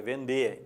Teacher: A diferença é que o timbre do E é fechado